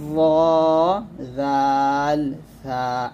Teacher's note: জিহ্বার আগার সামনের উপরে 2 দাঁতের আগার সঙ্গে লাগিয়ে 3টি হরফ উচ্চারিত হয়, ভ জাল সা এরকম।